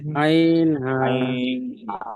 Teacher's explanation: এই কণ্ঠনালীর মাঝখানে তো উচ্চারিত হয় আইন হা, এই দুটো অক্ষর